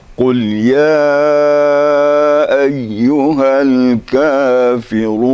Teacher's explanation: Mad tabi'i sesudahnya ada a i u atau alif yang berbaris atau disebut juga hamzah. Jadi mad jaiz munfasil. Jadi harus panjangnya harus rata-rata.